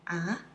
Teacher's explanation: the second tone is rising tone. It sounds like asking a question, but it's not. When you ask a question, you say, ah, what?That's the sound, second tone, ah.